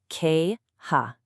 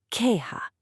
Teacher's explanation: It's not like the J and jump. It comes from the back of your throat. It's a strong puff of air. Kind of like the H in hello but with a bit more oomph.